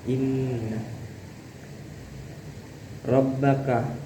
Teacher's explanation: inna ini bacaannya gunnah. Jadi bacanya itu harus didengungkan.